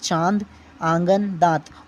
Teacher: ऐसे स्वर जिनका उच्चारण नाक और मुंह दोनों से होता है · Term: अनुनासिक